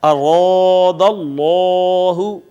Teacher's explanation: اس میں جلالت کا ماقبل اگر مفتوح یا مضموم یعنی زبر یا پیش والا ہو تو پھر ہم اس کو پر کر کے موٹا کر کے پڑھتے ہیں